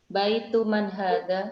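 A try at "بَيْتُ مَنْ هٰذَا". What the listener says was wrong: Ahsanti, baitu man hadza.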